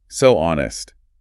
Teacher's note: Rounded lips. W glide.